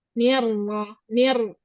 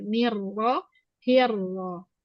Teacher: Dia takrirnya sekali saja, setelah itu mengalir.